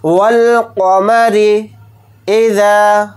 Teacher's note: मीम को जल्दी पढ़ेंगे, रा को जल्दी पढ़ेंगे, रा के नीचे ज़ेर और रा को यहाँ पर बारीक पढ़ेंगे रा पे ज़ेर होने की वजह से · वाव को लाम साकिन के साथ मिलाकर पढ़ेंगे, ये अलिफ नहीं पढ़ा जाएगा। क़ाफ़ को जल्दी पढ़ेंगे और यहाँ पर क़ाफ़ को मोटा यानी पुर पढ़ेंगे।